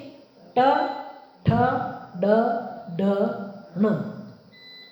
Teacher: મૂર્ધા ટ ઠ ડ ઢ ણ મૂર્ધામાંથી અવાજ આવે. ત્યાં સ્પર્શ થાય.